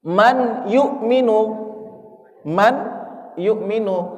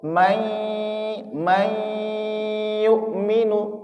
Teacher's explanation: Tidak sekedar diidgamkan, dileburkan dari nun ke ya may yukminu tapi ada dengungnya disangkutkan ke ghunahnya itu. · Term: idgham bighunah